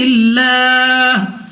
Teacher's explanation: لام اف اللہ سے پہلے حرف کے نیچے ہمارے پاس زیر ہے تو اس لام اف اللہ کو باریک پڑھیں گے